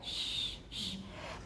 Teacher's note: We're also lip rounding, although it's not all the way to oo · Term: labialization